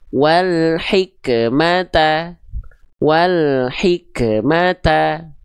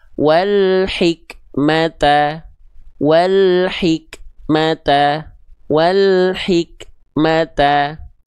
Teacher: kaf sukun jangan sampai dilafalkan dengan pantulan